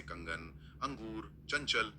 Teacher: यहां ध्वनि एकदम तेज और स्पष्ट रूप से नाक से आती है। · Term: अनुस्वार